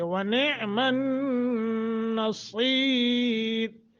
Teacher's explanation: صاد کو موٹا، را باریک کریں گے